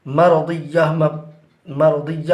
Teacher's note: مرضیہ میں جب وقف کریں گے تو تا کو ہا سے بدل دیں گے